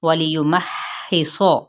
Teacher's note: ہا وسط حلق سے، صاد حروف متعالیہ میں سے ہے